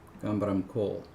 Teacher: the kind of phrase level stress would be on coal